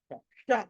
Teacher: నాలిక మడత పడాలి వెనకాల